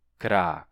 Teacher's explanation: o cras, para amanhã, a gente perde esse S no falisco.